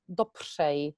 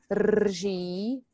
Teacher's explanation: a so-called fricative consonant, and that's usually the most difficult one you have to master. It's a combination of R and J.